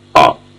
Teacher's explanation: When it is emphasized, It's a long vowel, the fourth vowel, a, and. When it is not emphasized, it's a very short vowel, a.